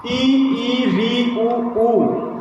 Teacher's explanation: ई री ऊ इनको बोलने में सबसे कम मुंह खुलता है, इसलिए इनको संवृत कैटेगरी में रखा गया है।